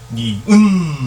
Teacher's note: 니은 하면 혀 끝이 윗 잇몸에 닿는 현상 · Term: 혀 소리